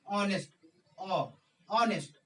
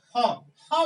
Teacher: जब भी आप ऑनेस्ट बोलेंगे तो एच का जो उच्चारण है वो अ आ रहा है। ऐसे बोलने में आपको एफर्ट नहीं लगाना पड़ रहा है, सिंपल बोलते हैं ऑनेस्ट, ऑनेस्ट, ऑनेस्ट का इस्तेमाल करते हैं।